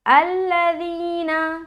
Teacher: ज़ाल की अदायगी नरमी के साथ करेंगे और बगैर सीटी के